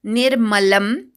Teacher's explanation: नी वर आघात अनुस्वाराचा म